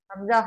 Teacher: हमजा हा हलक के नीचे वाले हिस्से से अदा होता है।